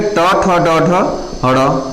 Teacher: ट से ड तक के जो भी वर्ण होते हैं वो मूर्धय में होते हैं। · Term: मूर्धन्य